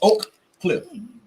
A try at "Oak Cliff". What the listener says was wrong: Nobody pronounces the K. No, it's not. It's pronounced O, just like O. You finna look up the spelling and shit. Siri gonna say O, motherfucker.